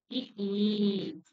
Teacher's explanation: இதழ்களை விரிப்பதனால் பிறக்கக்கூடிய எழுத்துக்கள்